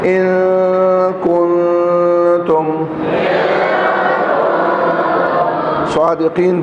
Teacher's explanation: کنتم میں نون کے بعد نون ساکن کے بعد تا آ گیا, یہاں بھی اخفا ہوگا